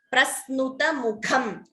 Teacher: Note the Dvitvam. S is doubling.